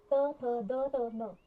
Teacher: these are pronounced with the tip of the tongue touching the back of the upper front teeth. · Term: dental sounds